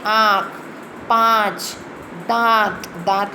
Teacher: इनका उच्चारण नाक से किया जाता है। अनुनासिक, इनका उच्चारण मुंह और नाक दोनों से हो जाता है।